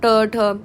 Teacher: इसमें आपकी टंग फोल्ड होके पीछे के पार्ट पे लगती है हार्ड पैलेट के।